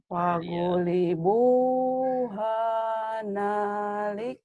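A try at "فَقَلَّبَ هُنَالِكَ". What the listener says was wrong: Hunalika, bukan hana, huna ya. Fagulibu, hunalika. huna. Gak ada hanya. Fagulibu hunalika.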